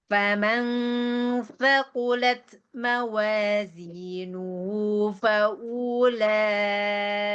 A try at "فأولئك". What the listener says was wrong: jangan panjang, punya jangan panjang. faulaika.